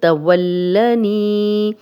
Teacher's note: लाम पे शद है तो शद वाला 2 बार पढ़ा जाता है। एक दफ़ा पिछले ज़बर के साथ पढ़ा जाएगा और एक दफ़ा अपनी हरकत ज़बर के साथ पढ़ा जाएगा।